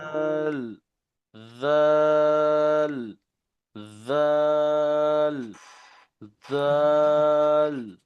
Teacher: জাল নরম, জিব্বার আগে উপরে দুই জায়গার সাথে লাগান